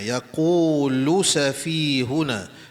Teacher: Lu pun tidak dibaca panjang ya sebab tidak terdapat huruf mad selepas huruf lam.